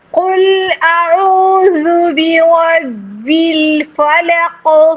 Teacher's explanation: فلق قاف چې کوم دی غټ دی او دې ور ټیله غوندې ورکول شي، ځکه چې دې کې کلکله او کلکله وایي دې جټکي ورکولو ته.